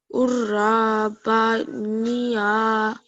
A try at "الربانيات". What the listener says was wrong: Okay, this is a za, not a ra. this is a za.